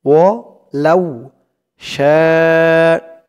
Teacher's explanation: 4 আলিফ টান, মধ্যে মুত্তাসিল